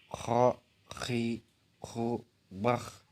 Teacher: dikeluarkan dari tenggorokan yang terdekat dari rongga mulut. Ciri khasnya terdengar seperti orang yang sedang mendengkur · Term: huruf Kho